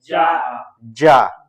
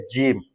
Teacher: জিহ্বার মধ্যখান তার বরাবর উপরে তালুর সঙ্গে লাগাইয়া জিম উচ্চারণ হবে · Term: জিমের মাখরাজ